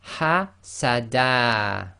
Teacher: When stopping on fathatain, it is always read as a fatha alif.